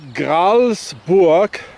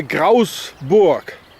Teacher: Phonetically and etymologically, it's interesting to say that the Bernese, different from the other cantons here in Switzerland, even the cantons that speak German or Swiss German, they don't pronounce the L. So the word Gralsburg, or Gralsburg as it used to be in German, would be pronounced here Grausburg, because they don't say the L.